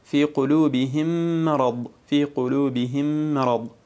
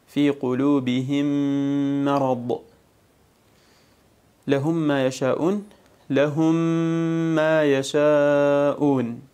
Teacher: فتدغم الميم الأولى في الثانية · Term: الإدغام الشفوي